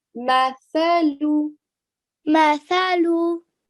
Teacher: They say masala, or sorry, in this case it would be masalu, right? But the actual proper way of pronouncing it is by getting the tip of your tongue and you're touching the back part of your front teeth. Okay, so you're making a TH sound.